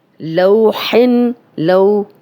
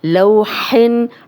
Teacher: اب یہ واو لین ہے، بغیر کھینچے نرمی سے پڑھیں گے۔